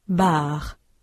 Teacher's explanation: le re est plus marqué en français Il y a une plus grande tension des muscles · Vous notez que le R est plus marqué en français. Il y a une plus grande tension des muscles. Quand on parle français, il est particulièrement important de marquer nettement le R à la fin d'un mot. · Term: la consonne R, le R français